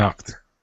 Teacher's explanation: When a word ends with a K, the past tense ed sounds like a T. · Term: T sound